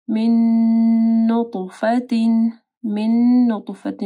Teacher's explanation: نون ساکن کے بعد نون ہے، یہاں پہ ادغام آ رہا ہے، ٹھیک ہے، غنہ کے ساتھ